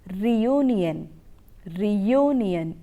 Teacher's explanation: You have R-E-U-N-I-O-N. You don't have a y sound in it, but you have to produce the sound y when you are pronouncing this word